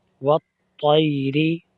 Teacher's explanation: طا حرف کلکلہ ہے، اس میں کلکلہ بھی ہوگا اور یہ مستعلیہ حرف بھی ہے، اس کو موٹا بھی پڑھیں گے